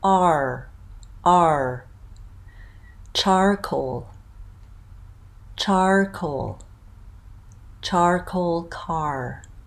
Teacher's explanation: kind of opening up at the beginning for that vowel ah and ending with ER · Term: R colored vowels